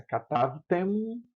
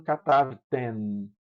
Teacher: Vejam a diferença. Katavtem, você fecha a boca para pronunciar o mem. Katavtem. E no feminino, katavten. A língua topa na ponta dos dentes. Katavten, que é um nun.